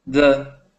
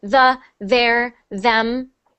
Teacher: I'm hearing the duh sound, like a D. I want you to turn it into a th. You need to stick your tongue out just a little more, and it will stop feeling unnatural after you do it a lot of times.